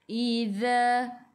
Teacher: Zazizu, hujung lidah keluar pada gigi depan. Za dua harakat ada alif, mad asli.